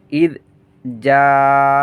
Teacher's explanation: জাআ চার আলিফ টান হবে। মদের হরফের পরে একই শব্দে হামজা আসলে, একই শব্দে মদের হরফের পরে হামজা আসলে চার আলিফ টেনে পড়তে হয়।